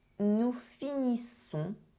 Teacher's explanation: the ending -ONS is a nasal sound, so you do not pronounce the N, you do not pronounce the S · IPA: [ɔ̃]